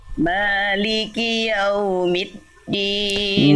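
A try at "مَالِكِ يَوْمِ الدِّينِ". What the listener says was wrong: Middin, jangan middin dal, jangan jadi ta. Maliki yaumiddin, jangan tapi middin.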